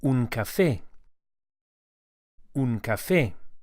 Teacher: we emphasize the e vowel as it has an accent on it, which indicates the stress.